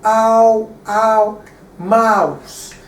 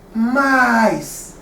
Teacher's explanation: From ow like this to I like this. So by the change of vowel sound from mouse, ow to I, mice, you achieve your pluralization.